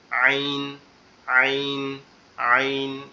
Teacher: আইনটা নরম হবে, পাতলা হবে, আবার গলা চাপা হবে